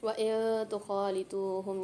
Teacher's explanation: نون ساکن کے بعد تا آ رہی ہے، غنہ کر کے پڑھیں گے